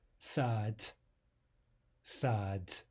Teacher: The word for garden is written with a final d, right, or d in English. We want to devoice that to a t or t in English. · We want to devoice that to a t or t in English. Sad, sad. Not sad, but sad, sad.